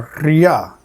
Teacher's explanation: And rʲ, a palatalized trill.